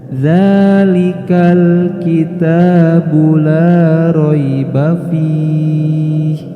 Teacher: hati-hati ketika membaca dzalikal, jangan sampai ada letupan atau pantulan. Semisal dzalikal, nah tidak boleh dibaca seperti itu, maka harus langsung dibaca dzalikal kitabu la raiba fihi.